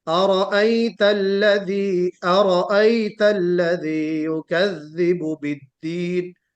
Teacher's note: حمزہ بالکل واضح ہو اور اس میں مد نہ ہو، مد نہ ہو۔ ارائیت الذی، ارائیت الذی یکذب بالدین، ارائیت الذی نہیں ہونا چاہیے۔